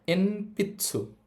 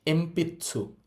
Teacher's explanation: নয়ের পরে আমরা দেখতে পাচ্ছি পি আছে, তার মানে পি লাইনের বর্ণ আছে। যেহেতু নয়ের পরে পি লাইনের বর্ণ আছে, নয়ের উচ্চারণ ম হবে। তাহলে এটাকে আমরা এনপিৎসু বলবো না, এটার উচ্চারণ হবে এমপিৎসু।